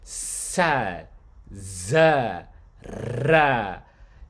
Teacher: these are sounds that the tongue rests not on the teeth per se, but like on that ridge, like right behind the teeth. And then the sounds are produced again by changing the amount of pressure you put against. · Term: alveolar sounds